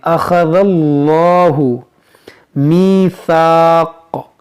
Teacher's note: अल्लाह के लाम से पहले ज़बर है तो इसको हम मोटा पढ़ेंगे